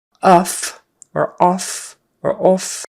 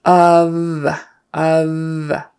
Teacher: an O but it's a short u sound uh uh and that f say it like a V it's not off or off or off it's of of so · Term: voiced F